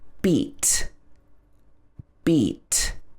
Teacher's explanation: So this has E in it, a long E, single vowel sound. Your tongue is at the top of your mouth, at the front.